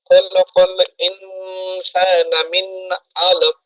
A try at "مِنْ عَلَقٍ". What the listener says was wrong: গুণনা হয়ে যাচ্ছে আবারও। মিন না, আলাক। গুণনা হচ্ছে। মিন, আপনি দেরি করবেন না। মিন আলাক, মিন আলাক, আলাদা করে বলেন আমার সাথে। মিন আলাক।